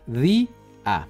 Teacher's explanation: en la palabra día la sílaba es abierta y además está acentuada